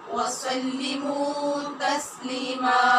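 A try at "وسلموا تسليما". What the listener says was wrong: سلموا کی آواز کیوں آ رہی ہے؟ وسلموا وسلموا تسلیما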